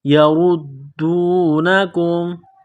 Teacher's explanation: را کے اوپر پیش ہے، را کو موٹا کرنا ہے، را کو دال کے ساتھ ملانا ہے، دال کے اوپر تشدید ہے، دال کو دبانا ہے، سختی کرنی ہے۔